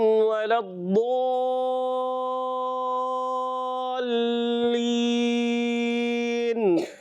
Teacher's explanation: یہ بڑی مد ہے، اس کو کہتے ہیں مد لازم